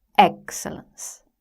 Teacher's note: In excellence, the first syllable is stressed.